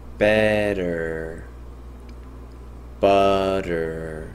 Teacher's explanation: 유성음화라는 것은 T 소리가 D 소리처럼 변한다는 것이고요. 설탄음화 된다는 것은 혀끝이 잇몸을 톡 치면서 소리 난다는 것을 말합니다.